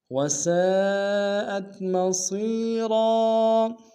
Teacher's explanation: سین کی سالف مدہ ہے اور مد متصل ہے، کم سے کم 3 امتداد میں کھینچیں گے